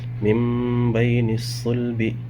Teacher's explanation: نون ساکن، اس کے بعد با آ رہا ہے، اس نون کو میم میں بدل دیں گے